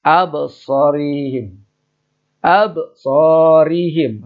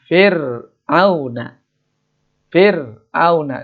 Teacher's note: ro dibaca tarkik, dibaca tipis apabila ro berbaris kasroh.